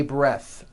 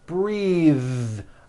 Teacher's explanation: breath is a noun take a breath unvoiced but when you change it into a verb the vowel changes and it becomes breathe